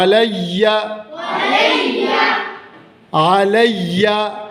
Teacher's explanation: علیہ، علیہ نہیں، حمزہ نہیں ہے یہ، علیہ، یہ عین کو ہم حمزہ نا ہمیشہ حمزہ کی آواز میں پڑھتے ہیں، تو حمزہ کی آواز میں اس کو نہیں پڑھنا، حمزہ کی آواز نہیں نکالنی عین کو پڑھتے ہوئے، عین حلق کے درمیان سے ادا ہوتا ہے